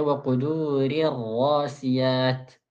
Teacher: Ra pertama yang tipis, kedua dibaca tebal.